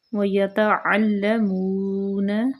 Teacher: واو جو ہے ہونٹوں کی گولائی سے